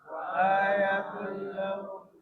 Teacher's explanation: Ya, di sini tanwin bertemu dengan huruf lam, idgham bila gunnah. Ya, tanwinnya melebur ke huruf lam tanpa gunnah.